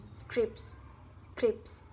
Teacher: Dalam kelompok 3 atau 2 plosif ditambah frikatif, plosif tengah akan menghilang.